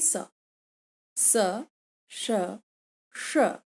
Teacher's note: दंत्य स, तालव्य श और मूर्धन्य श, ये सभी ऊष्मीय ध्वनियां कहलाती हैं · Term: ऊष्मीय व्यंजन